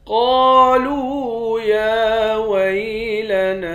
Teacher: قاف کو موٹا پڑھیں گے، قاف کے بعد الف ہے، ایک الف کے مقدار کھینچیں گے، لام کے بعد واو ہے، اس کو بھی ایک الف کے مقدار کھینچ کر پڑھیں گے۔